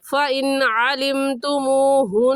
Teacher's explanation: फ़इन में नून साकिन के बाद हरूफ हल्की में से आइन आ गया है, तो इस नून साकिन पर हम गुन्ना नहीं करेंगे। ऐसे पढ़ेंगे, फ़इन अलिमतुमूहुन्न, नून मुशद्दद पर हमेशा गुन्ना होता है, गुन्ना करके पढ़ेंगे।